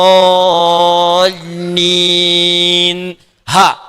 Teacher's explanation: Karena dua-duanya hamzah dengan ha tidak terhalang, keluar bebas saja, maka tidak dimasukkan urutan pertama.